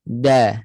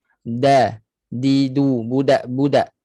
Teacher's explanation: Hujung lidah sentuh pada belakang pangkal gigi atas. Dekat akar gusi. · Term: makhraj dal